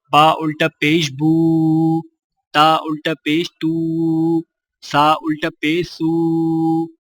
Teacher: الٹی پیش ہونٹوں کو گول کر کے تھوڑا سا کھینچ کر پڑھا جاتا ہے